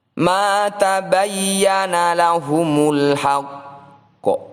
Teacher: Huruf qaf berada di akhir bacaan dan bertanda tasydid seperti ini adalah bacaan qalqalah akbar. Cara membacanya tetap kita pantulkan, namun tidak langsung, ada jeda atau jarak sekitar 1 ketukan.